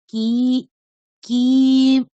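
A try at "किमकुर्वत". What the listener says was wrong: কিটা হর্ষ ম্যাডাম, ঠিক আছে, কিটাকে টানবেন না, তাহলে কিটা যেহেতু হর্ষ বর্ণ, তাহলে কিমা কুর্বত।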